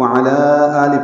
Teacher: اب دیکھیں اس پہ مد ہے، لام پر کھڑا زبر، اور اس کے بعد دوسرے کلمے میں حمزہ آنے کی وجہ سے مد بنی ہے، مد منفصل، ہم اسے 4 حرکات لمبا کریں گے